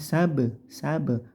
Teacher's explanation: qolqala sugro ba sukun dibendalkan dipantulkan